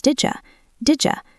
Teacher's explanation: U starts with a yes sound. When you push them together, d plus y creates a J sound